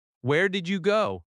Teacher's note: Stress did and go slightly. The small words are softer.